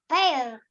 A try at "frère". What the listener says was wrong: No, most of you are using ear sound there. There is no ear sound. It is not mayor, payer, or frayer. Ear sound is not there.